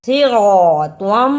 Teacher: صِرَاطًا، اسے صِراطًا نہیں پڑھنا، صاد کی جگہ پہ سین کی آواز اور طوا کی جگہ پہ تا کی آواز نہیں آنی چاہیے. صاد کو موٹا پڑھنا ہے